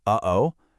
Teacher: that little catch in your throat in the middle of uh-oh, that is a glottle stop. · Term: glottal stop